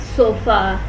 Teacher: It is a mid-central unrounded vowel. It is called schwa.